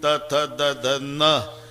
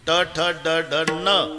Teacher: नळ्याचा न उच्चारा तर जीभ दाताला स्पर्श करणार. बाणाचा न उच्चारा अजिबात दाताला लागत नाही, टाळूला. इतकं जवळच आहे ते.